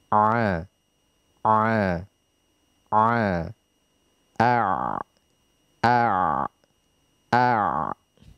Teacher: Harful ain dia berada di tenggorokan bagian tengah, dan kita mencapai ain yang fasihah dengan menyempitkan apa yang kita namakan dengan lisanul mizmar, yang dalam bahasa Indonesia kita biasa artikan katup epiglotis.